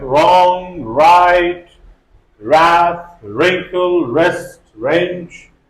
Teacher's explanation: W becomes silent before R and sometimes before H at the beginning of a word. Whenever at the beginning we have WR, W is silent. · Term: silent W